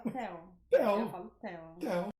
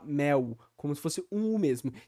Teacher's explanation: todos os L's na posição final da sílaba no português brasileiro são ditongados, viram esse encontro de duas vogais, ao invés de ser um som consonantal de L. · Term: ditongação do L